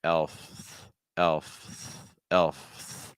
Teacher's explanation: again you need that l sound L that's your vowel sound it's an e linking with a dark L tip here tip of your tongue down back your tongue a · I'm starting off with the F sound top tooth against my lower lip that's where I'm starting elf starting with the f and then